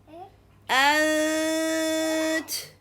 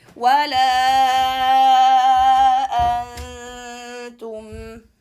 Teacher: But if we have noon sukoon followed by ta, in this case, we are going to get ready from the hamza to the ta, as I have at. The tongue is going to get ready for the ta, then hold this position and make the nasal sound.